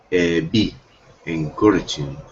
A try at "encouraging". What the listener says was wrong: You are absolutely right. Encouraging. Excellent. Perfect.